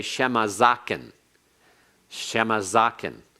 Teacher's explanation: it's like it were a segol, and it's like the accent were on the first syllable